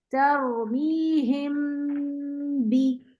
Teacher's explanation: हमारी आवाज नाक से गुजरती जाएगी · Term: हम स्टे